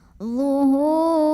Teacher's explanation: Huruf ra dibunyikan secara tarqiq karena ra-nya itu berbaris kasrah. Maka cara bacanya ra yang kasrah dibunyikan dengan tipis. Pangkal lidah tidak usah diangkat ya. Jadi ringan saja.